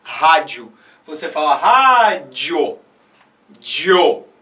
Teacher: O O é mais forte na pronúncia do que o I. Então, se o I é mais fraco, o I é a semivogal. O O, que é mais forte, é a vogal. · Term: crescente